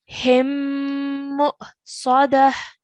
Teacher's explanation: it's going to be a light and a soft sound, but a slight jerk sound that we're going to make for the hamza sakin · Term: soft jerk sound